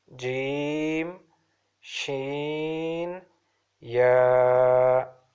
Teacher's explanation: these 3 letters are emitted from the middle of the tongue and the roof of the mouth that lies opposite to it